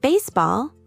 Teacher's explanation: In baseball, the stress is on the first syllable. Similarly, in basketball and volleyball, the stress is on the first part. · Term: stressed syllable